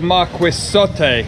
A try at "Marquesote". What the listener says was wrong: Yeah, the U is not pronounced.